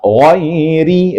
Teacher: gin itu pastikan keluar dari ujung tenggorokan dan tebal